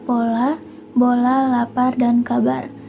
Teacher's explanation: Yang pertama itu ada konsonan hambat bilabial